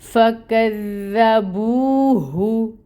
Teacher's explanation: دال کو نرمی سے بھی پڑھیں گے، شدت نہیں ہونی چاہیے اس میں